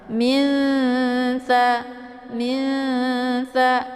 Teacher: Jadi cara bacanya antara tingkat kesamaran dan juga dengungnya itu seimbang atau setara ya. Min tha, disamarkan bunyi nunnya, kemudian didengungkan dengan dengungan yang setara dengan bacaan yang samar ya. Disamarkan bunyi nunnya, kemudian siap-siap masuk ke huruf tha. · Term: ikhfa